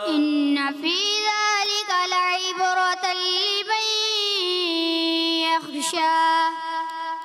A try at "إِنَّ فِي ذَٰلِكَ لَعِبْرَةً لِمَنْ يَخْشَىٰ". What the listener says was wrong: ان نون مشدد کو لمبا کریں گے, غنہ کریں گے کلب کا, اور لمن یخشى خا کی ادائیگی کلیئر کریں گے.